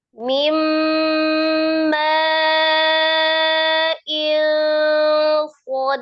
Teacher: Ini dipantulkan huruf dal ya. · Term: qalqalah besar